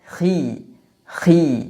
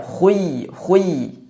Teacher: huruf Kha ketika dalam kondisi kasrah tidak dibaca setebal saat fathah atau dhammah tapi tidak sampai ke derajat tipis para ulama mengistilahkan dengan istilah tafkhim nisbi jadi dibaca misalnya dalam